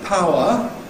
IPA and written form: ˈpaʊə (power)